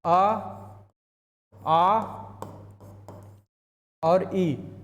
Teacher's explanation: मौखिक में सिर्फ मुंह से हवा निकल रही है।